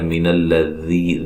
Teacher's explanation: ذی یا مدہ ہے، ذال کو نرم ادا کرنا ہے